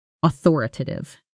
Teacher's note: The primary stress is on the second syllable.